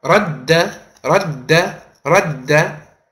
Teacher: It's as if you're pronouncing one dal, but you're stressing on it. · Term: shaddah